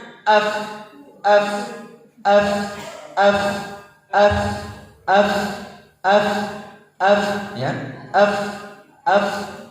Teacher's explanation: Terasa toh ada hembusan toh? Nah, terus kita rasakan pada ujung gigi ketemu dengan bibir